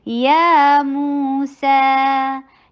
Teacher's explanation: या 2 counts long, मू 2 counts long, सा 2 काउंट्स लॉन्ग, तो तीनों की लेंथ बराबर।